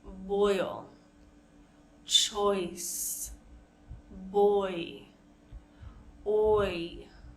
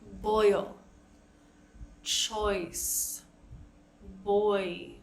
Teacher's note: And that's what's giving us that oi sound. So our tongue is initially being pulled back and then going forward to make the oi, e sound.